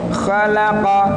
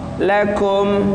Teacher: Kalau qaf itu lebih dalam, tenggorokan lebih dalam. Kemudian kalau kaf, tenggorokan di atasnya.